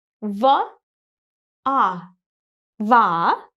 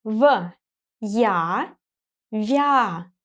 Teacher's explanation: When I pronounce the second syllable, my tongue is closer to the palate.